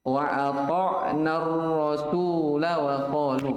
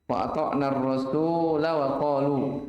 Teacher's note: Tapi kalau antum wasal ya, kalau antum sambung ke ayat setelahnya, maka lam di sini wajib dibaca pendek